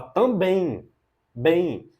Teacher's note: uma oxítona, porque o forte é bem.